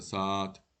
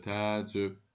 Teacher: Eyni cinsli qoşa saitli sözlərdən yanaşı işlənən qoşa saitlərdən biri düşür, digəri isə uzun tələffüz edilir